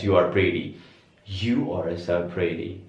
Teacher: Jadi teman-teman kalau sounding like British, ini T semuanya tetap dibaca T. Tapi kalau pengen sounding like American, ini T-nya diganti menjadi D. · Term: flap T